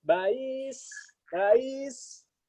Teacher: Itu hamzah musahalah antara hamzah dengan huruf iya.